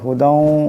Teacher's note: এখানে কাফ এই লামকে ধরবে লিমা বাইনা ইয়াদাইহি ওয়া হুদাউ এখানে দালের উপর দুই জবরের তনবিন এরপরে ওয়াও আসছে ঈদগাম হয়ে যাবে, ঈদগামের একালি পরিমাণ গুণনা হবে।